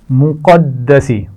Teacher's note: قاف کو موٹا پڑھا جائے گا، دال پر شد ہے تو سختی سے پڑھا جائے گا